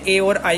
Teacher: ए और आई का उच्चारण जो है वो कंठ तालु से होता है